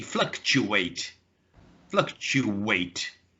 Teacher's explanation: There's a sound there which is not being represented by any, excuse me, by any of the letters. Which is, if you listen very carefully, there's a w sound, a w, as if there was a W in the word. Because I don't say fluctuate, I say fluctuate, fluctuate. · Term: intrusion sound